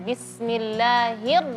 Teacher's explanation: rnya enggak boleh r kebanyakan getarannya. Cukup satu getaran saja